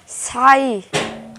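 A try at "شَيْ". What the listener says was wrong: ছাই কইতাছো কেন শিন উচ্চারণ করো তুমি তো সিন উচ্চারণ করতেছো সা উচ্চারণ করতেছো আউযু বিল্লাহি মিনাশ শাইতানির রাজিম তুমি শিন উচ্চারণ করতে পারো না বলো তো তালবস্য শিন শিন শিন ইয়া জবর শাই শাই এরকম করো শাই শাই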